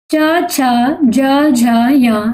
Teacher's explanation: च छ ज झ य ये स्पर्श संघर्षी व्यंजन कहलाते हैं, क्योंकि जब इन्हें हम उच्चारित करेंगे तो इनका उच्चारण थोड़ा संघर्ष करके होता है, तो ये स्पर्श संघर्षी व्यंजन कहलाते हैं।